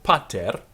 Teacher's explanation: firstly we have an accent, pa, and then a fall at the end of the word, ter.